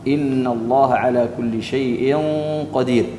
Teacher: فالغنة هنا تفخم عند حرف القاف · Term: التفخيم